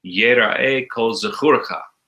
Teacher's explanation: Kol zechurcha. The emphasis is on kur.